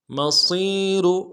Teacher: الف دال میں کھینچیں گے، را کو موٹا ادا کریں گے، اور وقف کی صورت میں را کو جزم سے بدلیں گے اور را کو باریک پڑھیں گے